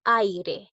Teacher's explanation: Primero se presenta una vocal abierta y luego una vocal cerrada. Por ejemplo, en aire, la A es abierta y la I es cerrada. · en aire, la A es abierta y la I es cerrada. Ambas vocales forman una misma sílaba. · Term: decreciente